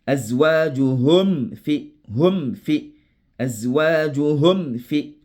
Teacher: Lorsque le fa et le wa viennent après le mim sakina, il faut doubler d'attention. Il faut faire tout possible pour ne pas appliquer la ghunna.